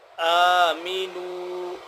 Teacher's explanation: ہلکا سا لمبا ایک الف کے برابر